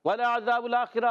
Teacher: واو ادا ہوتا ہے ہونٹوں کی گولائی سے. واو پر زبر، لام پر زبر، عین پر زبر، حرکات کو نہیں کھینچیں گے.